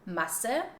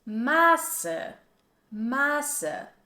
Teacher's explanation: Masse, which is pronounced with a short vowel and it means mass, versus Maße, Maße, which has a long A sound and this means measured.